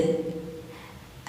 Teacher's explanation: Pantul ya, lad, ada de-nya, itu namanya qalqalah.